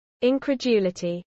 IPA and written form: ˌɪnkɹəˈdʒuːləti (incredulity)